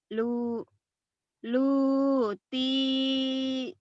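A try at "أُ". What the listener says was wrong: ini bukan lam tapi alif. Ayo.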